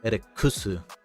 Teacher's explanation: because of the double K, you'd probably enunciate more on the K